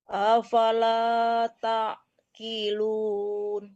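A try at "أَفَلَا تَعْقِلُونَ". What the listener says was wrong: Qi, jangan ki, jangan ki ya, tapi qi. Ya, qilun, huruf qaf tebal ya.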